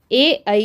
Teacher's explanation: ए ई जो है कंठ और तालू से मिलकर बोला जाता है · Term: कंठ तालव्य